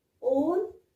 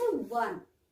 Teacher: The sound that we get here is W and not O. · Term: W sound